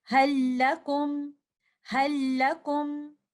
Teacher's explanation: This shadda is indicating the idgham kamil. The sound that you hear is from the second lam, not from the first lam. · When lam sakina of hal is followed by either lam or letter ra, we will completely merge the sakin lam of the harf hal or bal into the following letter